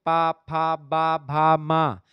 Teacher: आपका जो दोनों ओठ होता है, दोनों लिप्स आपस में चिपक जाते हैं